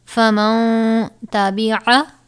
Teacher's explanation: ساکن کے بعد حروف اخفا میں سے تا آیا ہے، اور اگر حروف اخفا میں سے تا آئے یا حروف اخفا میں سے کوئی بھی حروف آئے تو وہاں پر ہم غنہ کر کے پڑھیں گے، یعنی اخفا ہوگا